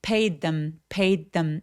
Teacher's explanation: paid them 아니죠. paid의 D 소리와 them의 TH 소리가 혀의 위치가 굉장히 가깝습니다. 그래서 한 번만 발음해서 paid them 이라고 연결하고요.